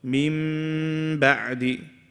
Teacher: We're changing the noon into a mim, and we are doing ghunnah. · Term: iqlab